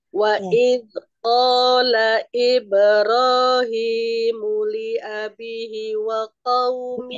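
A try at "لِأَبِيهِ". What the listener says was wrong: Abihi, afwan saya potong, li abihi. Bi-nya juga dua harokat.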